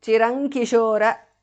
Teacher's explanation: अयि जीव चिरं kishora, chirankishora, because of sandhi. Anuswara changes to nga there.